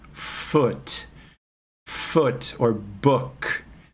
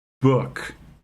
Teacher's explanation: Foot or book. So it's not oo, it's lower, and it's not rounded. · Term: the oo in foot